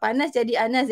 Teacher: Panas jadi anas, dia just buang bunyi p kat depan. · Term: deletion